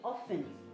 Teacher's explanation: As if there's no T there. Often. The T there is silent. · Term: The T is silent